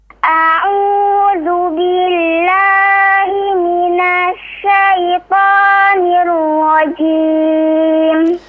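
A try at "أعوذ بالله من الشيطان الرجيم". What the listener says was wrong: Perhatikan. Syaitonir ra. Jangan niuro ya. Atau kayak ada w di situ, tidak, tapi nir itu ro yang ditebalkan, nirro ya, bukan nirwo ya, atau niuro la, tapi nirro pas dilafazkan o-nya itu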